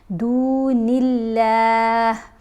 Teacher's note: نون کے نیچے زیر آئی تو ہم نے لفظ اللہ کی لام کو باریک پڑھا